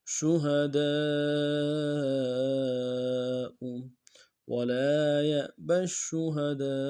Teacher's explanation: الف مدہ کے اوپر مدہ عارض ہے، کم سے کم 2-3 الف مقدار میں کھینچیں گے